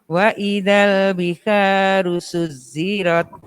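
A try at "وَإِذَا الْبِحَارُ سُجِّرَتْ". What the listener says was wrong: Suci bukan suzi. Suci.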